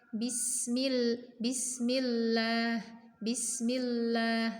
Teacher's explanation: suara yang seharusnya keluar lurus ke depan karena tertutup oleh lidah yang menempel dengan gusi, maka suaranya melenceng alirannya, melenceng ke arah samping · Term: huruf lam